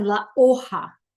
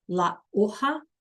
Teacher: H is silent, and the J sounds like an H